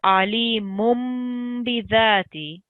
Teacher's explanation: What that small meme does, it's written on top of noon sakin or the mushad or the tanween letter, and you need to replace the un sound that the noon makes, so the n sound, you need to replace it with a meme